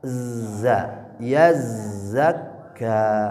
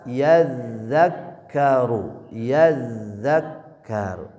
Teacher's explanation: Kalau zai ujung lidahnya dengan gigi seri bagian bawah. Ya, kalau dza ujung lidahnya ke ujung gigi seri atas. Ya, kalau nempel ujung lidahnya ke ujung gigi seri atas ini tempat huruf dza.